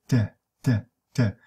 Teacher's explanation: So all of these sounds are alveolar sounds, and made by the contact between the tongue, tongue tip, and the alveolar ridge. This is why I call them alveolar sounds.